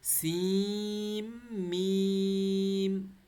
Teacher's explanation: سی کو کھینچ کے میم کے ساتھ مارنا ہے اب یہاں پر. سین کا جو نون ہے نا وہ ختم ہو کے میم کے ساتھ مل جائیں گے کیونکہ میم پر شد ہے